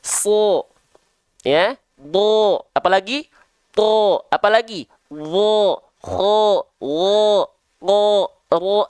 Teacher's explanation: Huruf-huruf tebal ketika dia berharokat fathah, dia dibaca tidak dengan vokal A. Tapi kita akan dengar dia condong dilafalkan kepada vokal O. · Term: huruf-huruf yang tebal